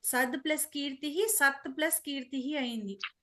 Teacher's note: అక్కడ వర్గీయ వ్యంజనానికి కా అనే కర్కశ వ్యంజనం పరమైంది. పరమవ్వడం వల్ల తా కాస్త వర్గంలోని మొదటి అక్షరమైన తాగా మారింది. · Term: చత్వ సంధి